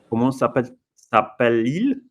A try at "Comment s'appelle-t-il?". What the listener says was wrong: S'appelle-t-il? Yeah, pronounce the T at the end. Comment s'appelle-t-il?